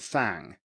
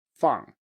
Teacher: So the a sound here is a back sound